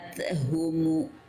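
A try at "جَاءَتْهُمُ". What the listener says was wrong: Masih ada e-nya sedikit. Ja'at. Nah, jangan ada e-nya. Ja'at humu.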